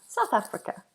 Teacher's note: Remember when we're doing South, tongue between the teeth on the TH.